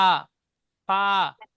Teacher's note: নিচের ঠোঁটের ভিজে অংশ এবং সামনে উপরে দুই দাঁতের আগার সাথে লাগিয়ে উচ্চারিত হয় ফা